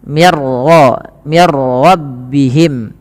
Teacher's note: Maaf, ini tidak ada bacaan qalqalah pada raful ra, tapi dibaca dengan bacaan idgham bila gunnah, yang dimana suara nunnya langsung dimasukkan kepada huruf ra dan ra dibaca dengan tebal